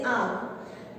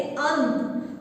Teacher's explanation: अर्धानुस्वार का उच्चारण पूरे अनुस्वार की अपेक्षा कोमल और हल्का होता है। यानी जो अर्ध अनुस्वारी जो उच्चारण है वो पूरे अनुस्वार की जगह कोमल होता है।